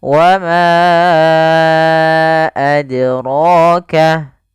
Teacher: huruf dal ketika dia sukun, dia harus ada pantulannya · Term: qalqalah